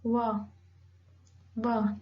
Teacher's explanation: ठीक है, जब हम ये वर्ड बोलते हैं व साउंड जब हम बोलते हैं तो हमारा जो टीथ है वो आपके लोअर लिप को टच करता है, अपर टीथ लोअर लिप को टच करता है